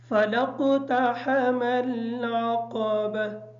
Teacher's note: فَلَاقْتَحَمَ کی جو قاف ہے اس قاف کو موٹا پڑھیں گے، تا کو اس احتیاط کے ساتھ پڑھیں گے تاکہ طوا کی آواز ادا نہ ہو، ہا کی جگہ ہا ادا نہ ہو۔ عقبہ کی عین کو کلیئر کریں گے اور قاف کو موٹا پڑھیں گے